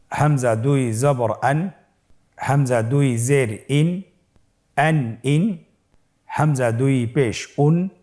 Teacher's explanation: তানবিনটি আসলে বাংলা আমরা যেভাবে দন্ত ন উচ্চারণ করি, অন্য শব্দের সাথে কানেক্টেড করে সেভাবে উচ্চারণ হবে।